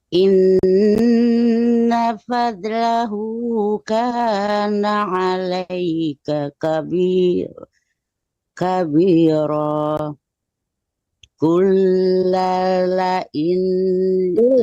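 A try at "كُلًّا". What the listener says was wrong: Lam cuma satu ya, lamnya satu mati. Kulla ini jangan kullala. Kulla ini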